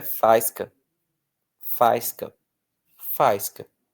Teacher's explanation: se eu não acentuo, vira faisca, faisca, faisca. O A fica forte.